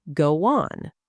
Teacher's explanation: When one word ends in a vowel sound and the next begins with a vowel, a tiny linking sound appears between them. Go on, a tiny W sound appears. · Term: vowel to vowel linking